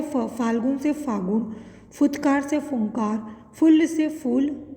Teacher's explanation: यह हिंदी की महाप्राण अघोष स्पर्श ओष्ठ ध्वनि है।